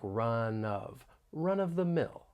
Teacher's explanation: When pronouncing this phrase, I want to point out that linking may occur. We can link the final consonant sound in run with the beginning vowel sound in of. And it's almost like we're moving that consonant sound over, so it sounds like run of the mill.